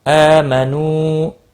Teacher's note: حمزہ کے اوپر کھڑی زبر ہے، ایک الف کے برابر کھینچ کر پڑھیں گے۔ نو واو مدہ ہے، ایک الف کے برابر کھینچ کر پڑھیں گے۔